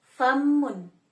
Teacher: Labiodental ini ee adalah bunyi yang dihasilkan ketika bibir bawah menyentuh gigi seri atas.